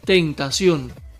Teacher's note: Sion es la sílaba tónica y lleva tilde en la O, pues termina en N.